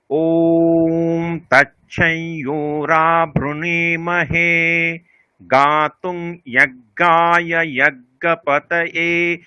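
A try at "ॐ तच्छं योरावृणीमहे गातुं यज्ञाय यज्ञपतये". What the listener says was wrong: আলাদা আলাদা দাঁড়িয়ে আছে মাঝখানে, আলাদা বলতে হবে আবার।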